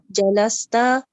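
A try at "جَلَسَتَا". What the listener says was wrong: Remember that the female version is jalasata. So all the letters by fatah.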